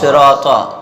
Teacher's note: صاد جو ہے حروف مستعلیہ میں سے یعنی موٹا پڑھا جاتا ہے